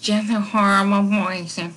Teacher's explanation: She kind of talks through her nose